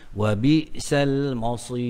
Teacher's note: Tebalkan ra itu kerana ra, fa, waw, ra baris di depan.